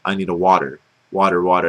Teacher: it's pronounced with a d and this goes for most words that have double T's